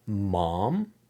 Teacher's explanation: I can't say mom without closing my lips for the M before and the M after